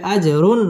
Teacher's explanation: জিম কলকলার হরফ ধাক্কা দিয়ে পড়তে হবে